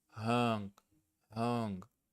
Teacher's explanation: Short and relaxed, the O in book, not the long O in food.